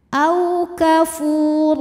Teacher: huruf ro dibaca secara tafkhim karena berharakat fathah tanwin cara bacanya ditebalkan